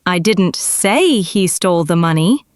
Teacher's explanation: The unstressed words, I didn't, say, he, the, are all rushed and swallowed. The one stressed word is loud, long, and clear.